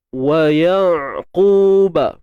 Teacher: Huruf ain sempitkan tengah kerongkong kita. Huruf ain kan bersifat tawassut.